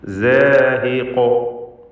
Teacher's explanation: വഖഫ് ചെയ്യുകയായതുകൊണ്ട്, കൂടാതെ ഇസ്തിഅലാന്റെ ഹർഫായതുകൊണ്ട് തഫ്ഖീമും വേണം, തടിപ്പിച്ചുച്ചരിക്കണം.